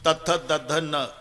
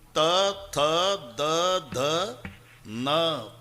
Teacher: जेव्हा संबंध दाताशी येतो ते दंते आहे. तथ दध न, किती ताकद लावून धक्का मारते जीभ आतून दाताला. त थ द ध न, पूर्ण लाईन ही दंते आहे.